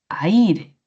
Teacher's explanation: La mayor fuerza de voz en la I, aire. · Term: hiato